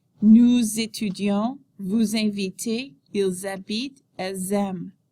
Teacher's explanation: Remember that the ENT ending is silent. Note the liaison when the verb begins with a vowel sound